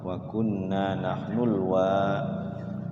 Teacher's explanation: Wanya panjang warisin, dua harokat.